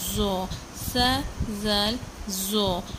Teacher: زو سا زال زو یہ تینوں ایک ہی جگہ سے ادا ہوتے ہیں کہ زبان کی نوک جب سامنے کے جو 2 دانت ہیں ان کی اندرونی کناروں سے ٹکرائے تو زو ادا ہوتا ہے۔